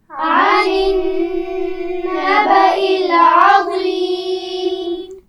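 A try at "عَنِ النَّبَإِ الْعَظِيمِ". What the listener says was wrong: نبأ العظیم، لام پر قلقلہ نہیں ہونا چاہیے. آپ پڑھ چکے ہیں کہ حروف قلقلہ 5 ہیں، قاف، طا، با، جیم اور دال.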